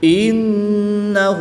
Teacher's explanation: نون مشدد میں ہمیشہ غنہ ہوتا ہے